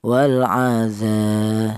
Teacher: Di sini ada dza yaitu ada alif ini di mana alif ini didahului huruf yang berharakat fathah ini dibaca panjang atau dibaca mad thaobi'i. Panjangnya mad thabi'i yaitu satu alif atau dua harakat atau dua ketukan. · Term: matobi'i